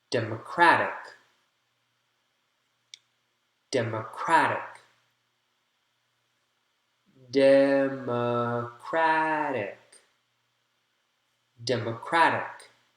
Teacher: Crack is the strong syllable there. So the third one gets a large circle.